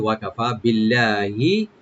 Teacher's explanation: তো ওয়াকাফা, এভাবে বলবো আমরা, ওয়া ওপেন, কাব ওপেন, ফা একালে টানবেন